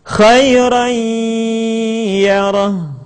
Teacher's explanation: kita baca nun, mim, tanwin tersebut dengan cara meleburkan kepada huruf yang kita hadapi